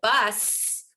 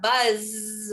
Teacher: think about voicing of s and z you know at the end of a word like bus we've got no voicing here and then we've got buzz where we've got voicing